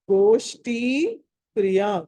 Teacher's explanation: గోష్ఠీలో అక్కడ షకారము ష అనేది షట్కోని, మళ్ళీ మహాప్రాణం ఒత్తి పలకాలి.